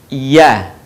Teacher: huruf ya keluar dari tengah lisan disentuhkan dengan langit-langit